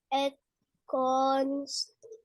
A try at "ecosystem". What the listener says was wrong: Echo. Ecosystem. Don't add letters to the word.